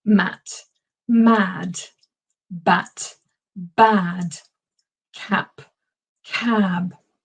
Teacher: if a vowel is followed by an unvoiced consonant typically that vowel will be shorter whereas if the vowel is followed by a voice consonant typically the vowel will be longer